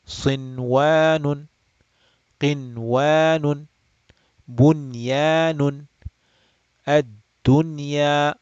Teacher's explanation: So we will pronounce the noon clearly without extending the nasal sound. Just treat it like idhar. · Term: idhar mutlaq